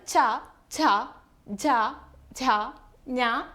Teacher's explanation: താലു നമ്മുടെ വായിലെ ഊനിനു പിറകിലുള്ള ഒരു കട്ടിയുള്ള ഭാഗത്തെയാണ് താലു എന്ന് പറയുന്നത് അപ്പോൾ ചവർഗ്ഗത്തെ താലവ്യം എന്നും പറയാറുണ്ട്